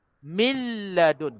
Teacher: nun mati bertemu dengan lam, terus masuk macam seolah-olah tak ada nun